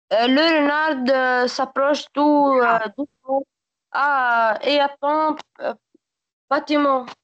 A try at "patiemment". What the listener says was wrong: Et attend patiemment, non pas patiemment. Le T ici se prononce C.